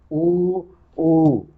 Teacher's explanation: इनके उच्चारण में हमारे ओठों की बनावट बनती है, अलग बाहर निकल आते हैं।